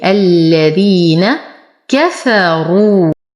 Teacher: نفخم الراء ونتم ضمتها